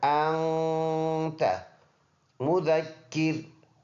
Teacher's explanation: یہ نون ساکن ہے تو اس میں اخفا کریں گے، ناک میں آواز لے کے جانا، انت مذکر۔ مذکر یہ بالکل فذکر کی طرح ہے۔